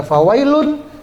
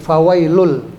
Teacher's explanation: Maka bunyi tanwinnya masuk ke huruf lam. Nggak boleh lagi dibaca fawailun, jadi fawailul. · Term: idgham bila gunnah